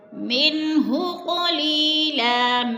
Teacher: من پہ اظہار ہو رہا ہے، نون ساکن کے بعد ہا حروف ہلکی میں سے ہے تو اظہار ہے، ظاہر کر کے لفظ کو پڑھیں گے، غنہ نہیں کریں گے۔